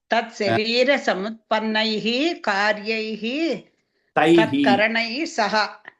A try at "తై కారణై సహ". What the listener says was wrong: తత్కరణై కాదండి, తై కారణై సహ. కొన్ని పుస్తకాల్లో కారణై అని ఉంది. మొత్తానికి కరణై కారణై పర్వాలేదు. కార్యై తై కారణై సహా అది చదువుకోవాలి.